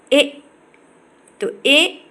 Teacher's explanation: कंठ तालव्य है, दीर्घ अग्र अर्ध विवृत अवृतमुखी